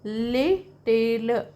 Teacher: L in little, are literally produced slightly differently, and the second one sounds slightly deeper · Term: allophones